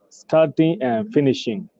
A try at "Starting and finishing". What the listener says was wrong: Correct. Starting and finishing, that is correct.